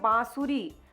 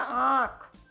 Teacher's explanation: जैसे आप बोलिए बांसुरी तो आपके नाक से भी आवाज निकलेगी बा स री इसीलिए बा पर चंद्र बिंदी होती है तो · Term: अनुनासिक